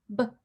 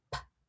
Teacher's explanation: For example, notice the difference between the sound that B makes and the sound that P makes, B and actually the exact same movement with your lips and your teeth and your tongue, b and p, but one is voiced and one is not voiced